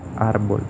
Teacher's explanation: En el caso de los ejemplos que se muestran, vemos árbol. Vemos que el acento recae en la sílaba ar, que está anterior a la última, árbol. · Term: acento fonético